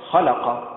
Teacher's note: بالنبر على حركة الخاء